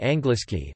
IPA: ˈaŋɡliski